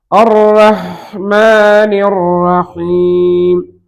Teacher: அதே மாதிரி ரா ஹாவுக்கு சுக்குன் வைத்தால் ஹா நாம் முன்பே பார்த்தது போல ஹா ஹர்ஃபுன் ரிஹ்வுன் அந்த ஹாவுடைய சப்தம் வெளிப்படுகிற அளவுக்கு நேரம் கொடுக்க வேண்டும்.